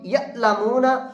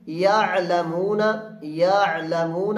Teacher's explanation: حمزہ کی آواز سخت اور جھٹکے والی، اور عین کی آواز قدرے نرم اور بغیر جھٹکے کے